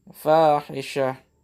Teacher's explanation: Ta marbuta itu dia dimatikan dan dirubah bentuk dan menjadi ha.